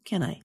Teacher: The two small words can I sound like one word with two syllables